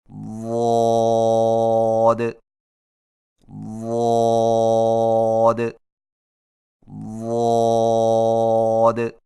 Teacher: ضاد کی ادائیگی میں زبان کے پچھلے حصے کو تالو کی طرف بلند کرتے ہوئے زبان کے موٹے کنارے کو اوپر والی داڑھوں کی جڑ پر آہستہ آہستہ نرمی سے لگا کر خوب موٹی اور دراز آواز میں پڑھیں